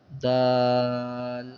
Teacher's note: آخر میں لام کا ساؤنڈ آئے گا اس کی ادائیگی میں، 3 الف کے برابر اس کو کھینچ کر پڑھیں گے